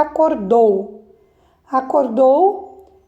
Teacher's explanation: a sílaba tônica está na última sílaba, o dou. Então, ela é uma palavra classificada oxítona.